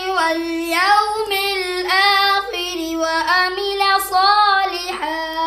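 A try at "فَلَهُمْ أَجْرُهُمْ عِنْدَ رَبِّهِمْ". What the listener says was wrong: جدھر عین ہوتی ہے ادھر عین سے ہی پڑھتے نہیں اور حمزہ کو عین بناتے ہو، یہ بچو فَلَهُمْ اجرهم، اج جیم پر کلکلا کرو، اوج موٹا کیوں پڑھے، اجرهم عند ربهم،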